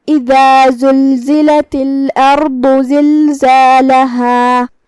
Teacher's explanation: زا کی ادائیگی زبان کے نوک اور دونوں دانتوں کے اندرونی کناروں سے ہے. ہم زا کو وہیں سے پڑھیں گے اور اسے ظاہر کریں گے. · باد بھی حروف تفخیم میں سے ہے تو ہم را کو اور باد کو دونوں کو بھاری آواز میں پڑھیں گے. کلمت زلزالہ، یہاں آخری میں ہم روکیں گے تو اس پہ مد الف سے روکیں گے، لہذا دو حرف کے برابر ہمیں اپنی آواز لمبی کرنا ہے. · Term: حرف الزا